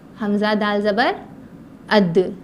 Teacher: دال بھی اسی طرح ہے کہ زبان کی نوک کو اوپر کے دانتوں کے جڑ سے ملایا جائے, جیسا کہ حمزہ دال زبر اد, حمزہ دال زبر اد.